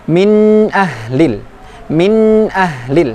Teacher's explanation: N-nya masih ada kedengaran tetapi tidak dengung.